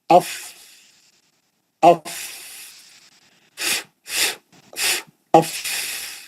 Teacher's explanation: दो दांतों के बीच में से हवा बाहर निकल रही